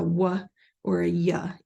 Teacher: they will produce a Glide sound such as a wah or a ya instead of the ER